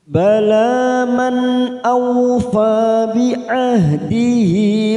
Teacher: nun sukun bertemu Hamzah Idhar halq kita baca jelas tanpa mendengung